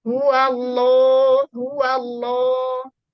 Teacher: dia membentur langit-langit dulu baru keluar dari rongga mulut suaranya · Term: lam yang tebal